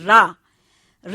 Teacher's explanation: ऊपर के हिस्से को जीवा की नोक मारती है ठोकर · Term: लोड़ ध्वनि